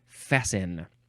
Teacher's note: Fast with an ET, but you don't pronounce the T. You say fasten for some reason.